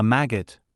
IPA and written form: ˈmæɡət (maggot)